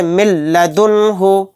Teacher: نون ساکن کے بعد لام آ گیا تو یہاں پر بھی ادغام بلا غنہ کا قاعدہ ہوگا، یہاں پر غنہ نہیں کریں گے، میم کو لام میں جلد ملا کر پڑھیں گے۔